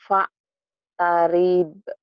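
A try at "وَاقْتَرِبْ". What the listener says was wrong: Kok Pak sih yakin Pak?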